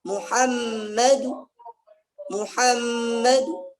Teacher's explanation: Ada namanya Raum. Raum itu sepertiga harakat saja. Tapi hukumnya hukum waslu.